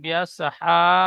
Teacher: এই হায় একালিপ টান হবে, খাড়া সাবার, এখানে একালিপ টান দেবেন